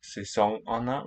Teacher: Sæsonerne with an eng from French influence